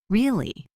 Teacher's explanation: tone that goes down and then up, it implies doubt or sarcasm.